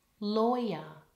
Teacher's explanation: Lawyer has an oi in it, like in the word boy.